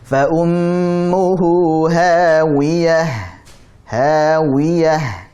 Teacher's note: Jadi fa ummuhu hu jangan ho. Jangan sampai masuk hidung.